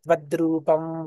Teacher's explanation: రెండోసారి గ్యాప్ ఇవ్వకుండా చెప్పినప్పుడు ఆ వ అనునాసిక వ గా చెప్పాను అన్నమాట